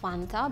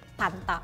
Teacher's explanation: you don't pronounce f you pronounce f as P